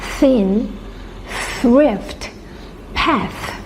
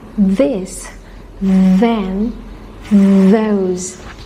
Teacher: And we have unvoiced th, in, thin, thrift, path. And we have voiced th, in, this, then, those.